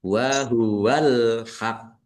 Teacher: Qafnya ada tasdidnya dan karena waqaf maka qafnya sukun menjadi 2. Dibaca, ditekan dulu baru dipantulkan.